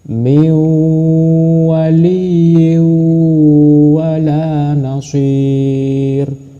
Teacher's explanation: tanwin tidak usah dibaca tapi langsung dimasukkan ke huruf w